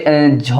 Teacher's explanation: सघोष है और महाप्राण है